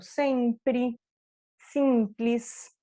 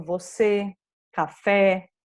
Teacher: esse último E não pode ter acento, ele será pronunciado como I. Por exemplo, sempre, simples.